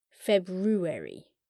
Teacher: It's pronounced weird, because many people don't sound out the first R.